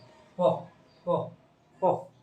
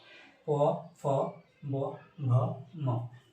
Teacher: প্রত্যেকটি উচ্চারণ সময় আমাদের ঠোঁট স্পর্শ হচ্ছে, ঠোঁটে ঠোঁটে উচ্চারিত হচ্ছে , ঠোঁটে ঠোঁটে স্পর্শ হচ্ছে, এই জন্য এদেরকে বলা হয় ওষ্ঠ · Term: ওষ্ঠ ব্যঞ্জন